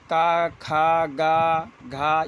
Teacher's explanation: ये कंठ से होते हैं, तो ये कंठ वाले बोले जाते हैं। · का खा ग घ यह कंठ से होते हैं